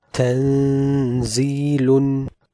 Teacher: The noon sakin here is in the state of ikhfa and hence it will be an extended ghunnah.